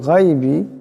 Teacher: এখানে গানকে মোটা আওয়াজে পড়বেন।